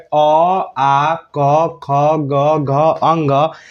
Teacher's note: अगर कोई आपसे अ क ख ग घ अ ङ का उच्चारण स्थान पूछे तो आप लोग को बोलना है कि कंठ